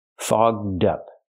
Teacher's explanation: We have to use the open vowel aw and the voiced g and d, fogged up. To help with pronunciation, link the d sound to the second word up, so you have dup.